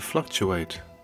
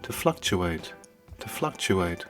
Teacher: the verb to fluctuate stress on the first syllable